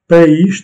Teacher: ce n'est pas une diphtongue. Les deux voyelles se prononcent séparément, comme étant des syllabes différentes.